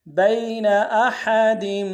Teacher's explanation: با کو یا کے ساتھ ملانا ہے، یا لین بغیر کھینچے پڑیں گے